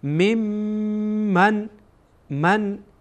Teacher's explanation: میم در اینجا غنه میشه یعنی صدا از بینی بیرون میشه